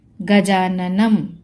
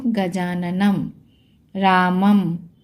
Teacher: तो इस तरीके से अगर लाइन के ऊपर एक बिंदी है तो उसका लास्ट में अगर बिंदी लगी है तो उसका प्रोनाउंसिएशन म के रूप में होगा। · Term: अनुस्वार